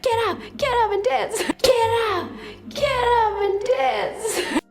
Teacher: As usually happens with phrasal verbs like get up, which means to stand, we link the 2 or 3 words together. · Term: connected speech